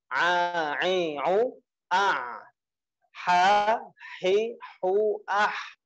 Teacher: Ain dan ha itu dua-duanya ada di tengah tenggorokan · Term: huruf halqiah